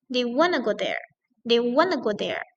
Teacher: Dari kata they. Turun lagi wanna, turun lagi go dan turun lagi there. Jadi dia turun gitu ya. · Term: falling